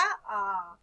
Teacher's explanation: यानी थोड़ा सा ज्यादा टाइम लगा ह्रस्व स्वर से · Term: दीर्घ स्वर